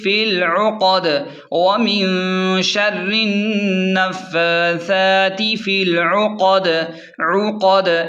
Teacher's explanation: آخری یعنی دال ساکن ہو جائے گی اور دال پر بھی قلقلہ یعنی جھٹکا ہوگا